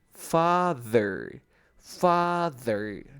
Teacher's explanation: Lengua entre los dientes y que vibre un poquito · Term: sonido del TH